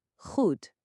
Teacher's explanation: É como se fosse um ré bem forte, só que com som mais arranhado, quase como se estivesse limpando a garganta bem de levinho. · O som é totalmente gutural. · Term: letra G, som gutural